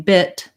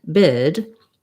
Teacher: So the difference between bit and bid, yes, there's the voicing difference, but bit is shorter and bid is longer.